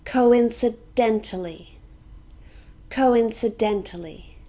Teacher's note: This has 6 syllables. Co-in-cident-ly. And we stress dent.